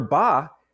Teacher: the vocal cords are capturing that air coming out your lungs, okay, and start vibrating before your lips part, which is why you don't really feel that puff of air in the same way.